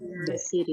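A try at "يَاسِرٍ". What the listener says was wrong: Yasirin ya, karena kita sedang belajar jadi harokatnya dibaca semuanya ya. Nah, ini yang harus diperhatikan ya.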